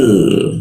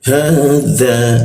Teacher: Lalu ha posisinya di tenggorokan bagian bawah.